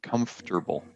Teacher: there's no vowel sound between the F and the T